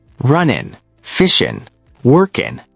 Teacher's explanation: In casual speech, we often drop the G.